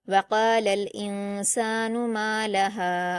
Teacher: और नून साकिन के बाद सीन है जो कि हुरूफ इफा में से है। इसलिए नून साकिन की आवाज को नाक में छिपाकर गुना के साथ पढ़ा जाएगा · وقال حمزہ پر حرکت جلد پڑھیں گے، نون پر جزم ہے تو حمزہ کو نون سے ملائیں گے اور نون ساکن کے بعد سین ہے جو کہ حروف اخفا میں سے ہے، اس لیے نون ساکن کی آواز کو ناک میں چھپا کر غنہ کے ساتھ پڑھا جائے گا